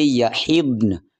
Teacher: نون بھی ظاہر کرنا لازمی ہے اور ضاد کو تو ظاہر کرنا ہی کرنا ہے، اور ضاد جو ہے نا وہ حروف مستعلیہ میں سے ہے، اور حروف مستعلیہ ہر حالت میں پوری یعنی موٹے پڑھے جاتے ہیں، چاہے وہ ساکن ہی کیوں نہ ہو